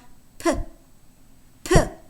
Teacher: P is a voiceless bilabial stop.